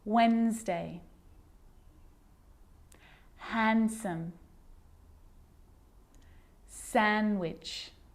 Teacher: I'm not pronouncing the D in Sandwich I'm just pronouncing the consonant n sound before it